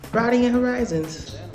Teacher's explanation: I say broaden with an aw, but says it with an ah.